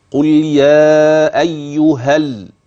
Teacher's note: قل يا ايها الذين هادوا لاحظ يا ايها عند الوقف اي الف ها في اخر ايها ثبت وقفا اما اذا وصلت فان هذه الالف تحذف